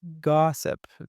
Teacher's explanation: because we have I in the word gossip, and I is in a totally unstressed position. So we change it into a schwa